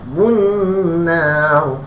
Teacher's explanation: nar tu panjang sebab matikan waqaf pada ra. Dua harakat juga.